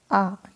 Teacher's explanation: जैसे कि आप उदाहरण के लिए देख सकते हैं आ, ठीक है, आ अगर बोल के देखें तो पूरा मुंह आपका ओपन होगा